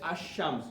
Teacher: the L got silent, okay, it just catches the next word. Like we can say ash-shams, we don't say al-shams, okay, but when it comes to qamar, we say al-qamar, okay. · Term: sun letter